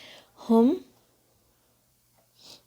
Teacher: ہا کی آواز حلق کے سب سے نیچے سے آئے گی، ہم، ٹھنڈی سانس کی طرح آواز آئے گی اس کی.